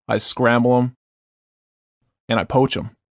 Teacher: the silent th of the pronoun them